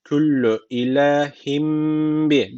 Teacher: iklap tecviti var. Bir elif miktarı dudaktan tutuyoruz. Baka ha boğazdan haka ve al ve le al la bir elif uzatıyor.